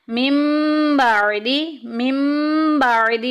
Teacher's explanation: नून साकिन के बाद बा आ जाएगा तो हम नून की आवाज़ को मीम से बदल कर पढ़ेंगे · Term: इकलाब